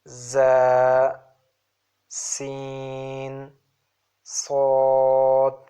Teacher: from between the tip of the tongue and between the plates of 2 top incisors and slightly above the lower incisors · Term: whistling letters